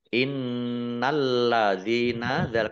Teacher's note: langsung masuk ke huruf lam ada tasydidnya lamnya dibaca dobel